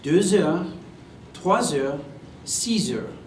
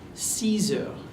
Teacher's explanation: Pay careful attention to the Z sound that happens between the word 2 heures, 3 heures, 6 heures. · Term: liaison